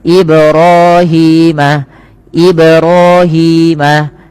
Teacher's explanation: Kemudian teman-teman pada lafal Ibrahima ib pantulkan pada lafal mim maaf pada lafal mim pada lafal ba yang dia berharakat sukun ia dipantulkan dan ini bacaannya kita kenal dengan bacaan qalqalah.